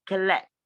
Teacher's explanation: You see the way I pronounce the word collect. The stress is on let.